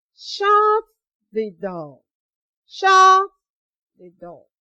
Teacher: We use falling tone to give commands, instructions, and advice.